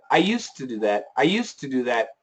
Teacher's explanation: most Americans use an aspiration into the T.